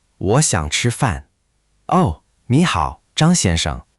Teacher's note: Clean retroflex on chī, clean curl on Zhāng, smooth and confident.